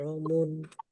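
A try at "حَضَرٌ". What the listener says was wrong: Jangan terlalu jangan terlalu bergetar. Lebih dari 2 getar.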